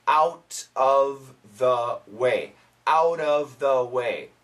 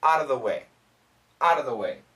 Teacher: if we have the word of and then after of if there's a consonant usually we can cancel the f sound